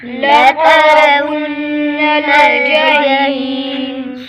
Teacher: لترى، را کے اوپر زبر ہے، را کو موٹا کریں گے، نون مشدد گنہ کریں گے، حی پر یا مدہ، سکون عارض تو مدے عارض ہوگی۔